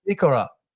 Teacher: when I sound it out, it's more of a D sound instead of an R sound, like a D, kind of rolls your tongue a little bit better than saying an R.